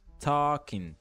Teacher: O L não vai ser pronunciado e nem o G